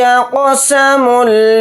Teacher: قاف کو جلدی پڑھیں گے لیکن قاف کو یہاں پر موٹا یعنی پر پڑھیں گے